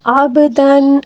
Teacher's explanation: با کے اوپر ساکن ہے، اس کو قلقلے کے ساتھ پڑھیں گے